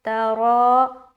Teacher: रॉ को मोटा रखते हुए खींचेंगे क्योंकि इसके ऊपर खड़ा ज़बर है